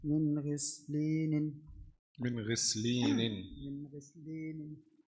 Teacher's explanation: نون ساكنة مظهرة قبل الغين المكسورة